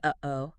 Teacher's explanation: Think about the sound you make when you say uhoh. That little catch or stop in the middle between uh and o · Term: glottle stop